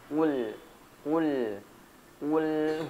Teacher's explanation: Jadi huruf lam tidak memantul jadi dialirkan sedikit suaranya